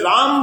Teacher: રા બોલતા તમારા બંને હોઠ ખુલી જાય છે અને મ બોલતા બંને હોઠ બંધ થઈ જાય છે